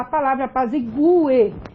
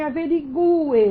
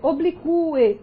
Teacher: Quer dizer, você tem uma separação que mostra a sílaba tônica forte e esse U, ele é pronunciável mais forte do que a vogal que aparece posterior